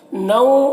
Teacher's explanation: نو یہاں پر تنوین ہے اور یہاں پر اخفا ہو رہا ہے، تو تنوین کی آواز کو ناک میں چھپا کر پڑھیں گے